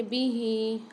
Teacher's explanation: ہاں کے نیچے کھڑی زیر آ رہی تو اس کو ایک الف مدار کھینچ کے پڑھیں گے